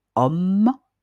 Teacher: on entend pas le h, on entend juste la voyelle o. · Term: lettre muette